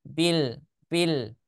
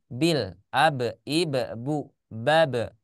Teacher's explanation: Di asyafatain, bukan di bagian dalam, tapi di kedua bibir. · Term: huruf B